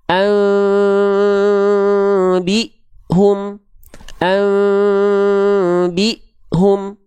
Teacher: disamarkan dan didengungkan ke bunyi mem tapi dia enggak nempel dikasih sehelai kertas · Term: furjah